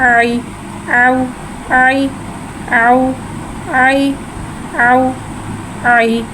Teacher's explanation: या साकिन से पहले ज़बर हो रहा है, यालीन हो रहा है, लिहाजा यालीन को बगैर खींचे बगैर झटके दिए नरमी से मारूफ पढ़ेंगे। आइन या ज़बर आई, आउ आई, आउ आई, आउ आई।